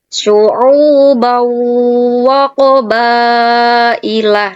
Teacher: ini harusnya suara fathah tanwinnya masuk ke huruf wawu. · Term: Idgham bi gunnah